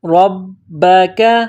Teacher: با کے اوپر تشدید ہے، با میں سختی کرنی ہے ربک کاف کو باریک کرنا ہے فادع لنا ربک یخرج لنا